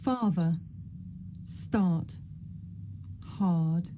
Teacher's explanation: This is a long vowel sound. It's pronounced ah.